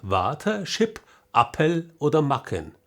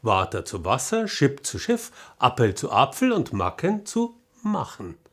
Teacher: kennzeichnend für das Hochdeutsche ist die sogenannte hochdeutsche Lautverschiebung